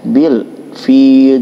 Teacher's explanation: alif lam menghadapi huruf fa ya, lamnya dibaca jelas ya. Bil fil, jadi jangan ada bunyi pantulan. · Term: alif lam qamariyah